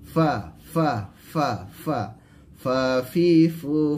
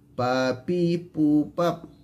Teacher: a yaitu bibir bawah bagian dalam bertemu dengan ujung gigi atas bibir bawah bertemu dengan dua gigi atas